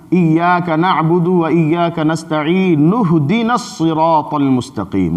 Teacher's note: نون کو ہاتھ سے ملا دیں گے، وہ حمزہ وصلی گر جائے گا